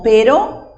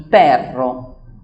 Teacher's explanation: Tenemos la R simple y la R que es vibrante. Generalmente cuando la R está al inicio de la palabra es una R vibrante, como si fuera con un sonido de motor.